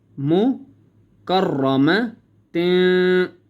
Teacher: را کو موٹا کرنا ہے کیونکہ را کے اوپر زبر ہے